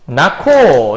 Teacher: 그럼 앞쪽에서 말하는 히읗 탈락 아닌가요? 히읗 탈락이 아니라 히읗과 기역이 만나서 새로운 키읔이 발음되는 거예요.